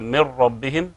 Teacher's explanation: فما فيش اثر لا للنون ولا اثر للغنة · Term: الادغام الكامل